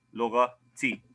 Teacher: So here the dhamma gets dropped and it's simply lughati.